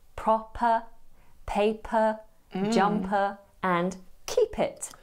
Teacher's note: a glottalized p which is often present in a Jordy accent · A glottalized P, which is often present in a Geordie accent. Now, this glottalized P will happen when a P is between two vowel sounds